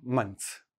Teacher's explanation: The ths I just switch to a tz. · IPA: mən(t)s